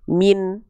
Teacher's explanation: nggak dibaca mina, mini, minu, tapi min gitu karena nunnya dibaca dalam kondisi sukun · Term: nun mati